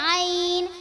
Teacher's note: आइन का मखरज वस्ते हलक यानी हलक का दरमियानी हिस्सा